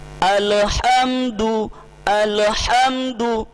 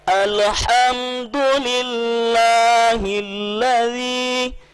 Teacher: Alif lam, lam yang sukun ini sering kita seret, dia seolah-olah berharakat.